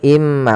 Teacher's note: tanwin bertemu dengan huruf mim maka cara bacanya masukkan ke huruf mim yaitu imma bukan lagi inma tapi imma sambil ditahan gunahnya dua